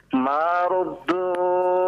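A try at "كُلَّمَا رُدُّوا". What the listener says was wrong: Kullama ruddu. Jangan ma, kullama.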